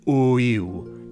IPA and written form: ʊ-iw (o-ïl)